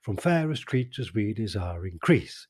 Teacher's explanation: the stress on the word increase is on the second syllable